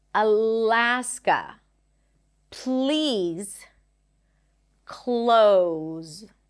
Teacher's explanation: For the L, the tongue does touch the upper pallet.